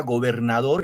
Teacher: como la palabra gobernador, el acento va en dor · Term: acento prosódico